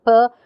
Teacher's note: it has the features voiceless and it's bilabial, it's a stop or an obstruent. So these are its features.